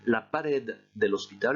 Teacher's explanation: Le mot pared se termine par une consonne, donc c'est cette dernière syllabe qui doit être prononcée plus fort, de même que pour hospital. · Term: accent tonique